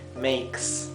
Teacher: la S no es la S vibrada, como el zumbido de abeja, como zzz, no es así. La S es suave, como silbada.